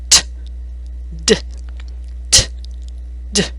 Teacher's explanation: these two sounds use the tongue and teeth the tongue Taps the back of the upper teeth t d t d again the T has no throat vibration